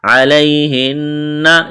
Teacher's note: یا لین ہے، بغیر کھینچ کے پڑھنا ہے، نون مشدد ہے، آواز ناک میں چھپائیں گے